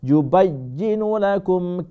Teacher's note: ইউবাইয়িনু একটু শক্ত করে, ইয়াটা ডাবল হবে